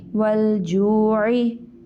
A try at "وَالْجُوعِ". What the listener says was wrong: حمزہ کی ساؤنڈ آ رہی ہے.